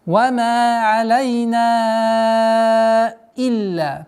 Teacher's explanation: Долгота в размере 4 огласовок. Фатхи.